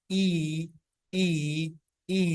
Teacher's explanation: high vowels, tongue is raised high